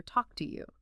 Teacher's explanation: Reinforcing that reduction of to to t and the smooth connection.